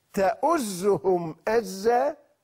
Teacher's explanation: الهمزة صوت شديد انفجاري